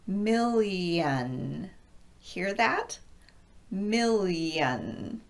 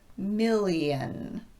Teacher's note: when an L or an N occurs in front of the ION, the EN can sound more like yen. This happens because of a process called assimilation, where one sound is impacted by a neighboring sound.